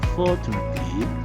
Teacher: the fall starts on the first syllable, for, and the rise finishes on the last syllable